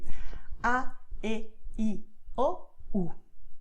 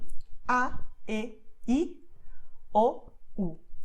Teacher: your mouth is wide open when you say ah, okay? When you say e, o, it's not so open, and when you say I, u, it's a little more closed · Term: vowels in Spanish